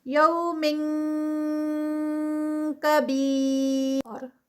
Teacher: را جو ہے وہ زیر کے ساتھ ہے لائٹ ہے